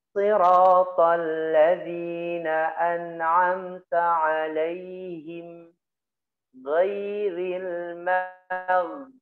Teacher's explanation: Ghain ini ya sifatnya jahar, dan juga dia memiliki sifat rikhawah, suaranya mengalir